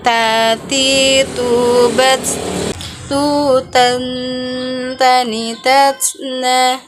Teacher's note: Cara melafalkan huruf ta dengan menyentuhkan ujung lidah kita dengan gusi gigi seri bagian atas dengan mengeluarkan sedikit nafas kita.